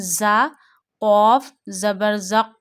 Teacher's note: We read za with a whistle sound